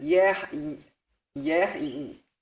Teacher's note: And so yihayeh becomes yehi. The yod makes its own vowel because there's no vowel on the yod and there's no vowel on the preceding consonant. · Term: semi-vocal